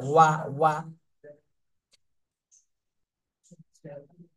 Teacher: হামজা জবর আ, ওয়াও জবর ওয়া, ওয়াও বলার সময় ঠোঁট একবারে গোল করে ফেলতে হবে